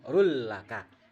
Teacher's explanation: tidak ada lagi suara run ya. Langsung rul laka. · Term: idgham bila gunnah